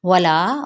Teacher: वाव होंठों की ना तमाम गुलाई के साथ